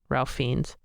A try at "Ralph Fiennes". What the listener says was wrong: There's no R. You don't pronounce the R. Alf Fiennes.